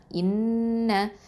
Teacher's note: இந்த ஹம்சா வந்து என்ன சொல்லுவோன்னா அகசல் ஹல்க்கு, அதாவது கீழ் தொண்டையிலேருந்து வரக்கூடிய எழுத்து, அங்கேருந்து தான் சவுண்டு வரணும்.